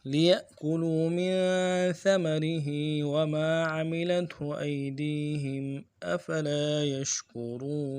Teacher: لِيَأْكُلُوا میں لام کو نرم سے پڑھیں گے، یا کو حمزہ کے ساتھ ملانا اور جھٹکا دیں گے ، لِيَأْكُلُوا میں کاف کے پیش کو ہونٹوں گول کریں گے